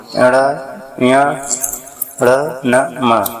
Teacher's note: जिन व्यंजनों के उच्चारण में वायु नाक और मुख दोनों से निकलती है नासिक के व्यंजन कहलाते हैं।